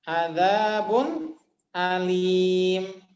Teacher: Ada ba, harokatnya dhammatain tanwin bertemu hamzah. Itu idhar halki.